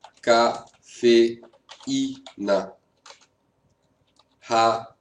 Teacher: Vous voyez que je sépare. Même s'il y a une rencontre des deux voyelles, elles ne sont pas dans la même syllabe. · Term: hiato